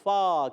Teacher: فا کا مخرج اوپر والے دانتوں کے کنارے، نیچے والے ہونٹ کا تر حصہ ادا ہوتا ہے